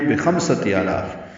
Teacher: آ اور لا دونوں کو برابر لمبے کریں گے